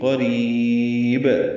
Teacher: پڑھیں گے، را باریک پڑھیں گے، را کو لمبا کریں گے، با ساکن پہ قلقلہ کریں گے